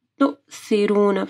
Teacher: پھر سا کے مخرج کا خیال رکھنا ہے، رو ہیوی پڑھی جائے گی